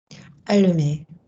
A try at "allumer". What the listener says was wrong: Can I have a bit more twang? Allumer. Don't let this drop. Allumer.